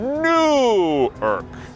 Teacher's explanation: E além disso, com Newark, a primeira sílaba é tônica. Newark. Com New York é a última.